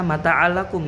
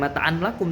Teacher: Nah di sana mata'allakum, enggak mata'an lakum tapi mata'allakum. Jadi si tanwinnya tuh nggak dibaca, langsung aja melebur kepada huruf lam. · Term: idgham bila gunnah